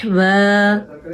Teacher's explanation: नून तनवीन के बाद हमजा आ गया तो हमने इस नून तनवीन को जाहिर करके पढ़ना है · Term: इजहार